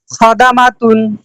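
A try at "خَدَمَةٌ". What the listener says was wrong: আবার।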